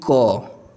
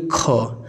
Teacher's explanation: जैसे ही आप ख बोलेंगे आपके मुंह से ज़्यादा हवा निकलेगी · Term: महाप्राण